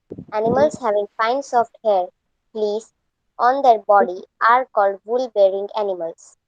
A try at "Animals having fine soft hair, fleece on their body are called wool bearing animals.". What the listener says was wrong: Don't break anywhere. You broke here. Here you broke. Here, no, on the bottom. Here you broke. Don't break. The way you give stress. If you break, the meaning changes.